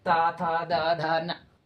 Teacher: त वर्ग यानी दांत से त थ द ध न